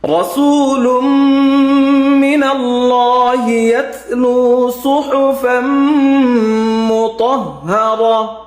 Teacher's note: ত হরফটা মোটা হবে, মুতাহহারা।